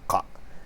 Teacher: This Q can sometimes be a K. The Q is kind of like a very far back K, like a ka, and that most languages don't have that really far back K, so K sound, so they would simply replace it with the letter K, because that K is a very common letter, almost every language has.